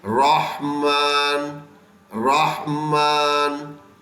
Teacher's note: تو یہ را موٹا کر دیتے ہیں. ہا کی آواز درمیان حلق سے نکالتے ہیں.